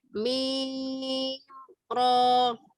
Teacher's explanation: mim ro itu tidak perlu ditahan. Jadi harus diidharkan. Mimnya diidharkan.